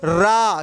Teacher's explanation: रा बोलते समय आपकी जीभ 2-3 बार क्या हो रही है, ऊपर टच हो रही है, मतलब क्या हो रहा है, वाइब्रेशन जीभ में प्रोड्यूस हो रहा है, इसलिए इसको हम क्या बोलते हैं, प्रकंपित व्यंजन बोला करते हैं। · जिन व्यंजनों का उच्चारण करते समय दोस्तों हमारी जीवा को 2-3 बार कंपन करना पड़ता है, उसे हम क्या बोलते हैं, प्रकंपित व्यंजन बोला करते हैं। मतलब जिन वर्णों का उच्चारण कर रहे हो उसमें हमारी जो टंग है, टंग को क्या करना पड़ रहा है, 2-3 बार है ना कंपन, वाइब्रेशन करना पड़ रहा है, तो उसे हम प्रकंपित व्यंजन बोला करते हैं।